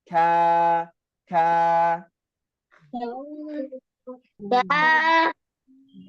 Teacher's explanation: Nah kalau huruf Kaf dia pangkal lidah bertemu dengan langit-langit yang keras hm Jadi k maju sedikit ka ka kalau huruf q ke